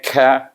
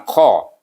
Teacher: angin sikit ka, bukan qa. Qa tu angkat pangkal lidah. Kaf ini tidak.